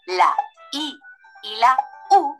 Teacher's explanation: la i y la u son vocales cerradas porque para pronunciarlas cerramos la boca